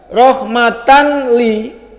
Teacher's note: Ketika ada tanwin ketemu dengan lam, maka tanwinnya enggak berbunyi nun mati, langsung masuk. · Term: Idgham